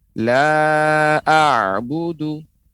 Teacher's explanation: Pengucapan ain dia sebelumnya dia lebih kuat menekan, setelah itu melemah.